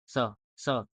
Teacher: दांत का। स, स बोलने में जीभ जो है वो दांत को टच कर रहा है